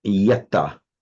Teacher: it drops the nasal in the past participle